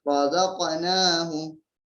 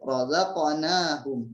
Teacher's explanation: Di situ ada qalqalah huruf qaf. Razaqnahum. Jadi memantul. Jadi bukan razaqnahum, bukan seperti itu tapi memantul razaqnahum gitu ya.